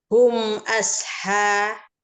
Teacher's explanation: Hum itu ada mim sukun bertemu dengan alif dibaca izhar, dibaca jelas. Asha itu ada ha matobi'i alif dibaca 2 harokat.